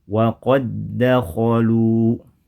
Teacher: yang kedua berharakat yang dibaca dengan cara di digabungkan menjadi satu tertulis dua huruf namun dibaca menjadi satu huruf yang bertasdid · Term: idgham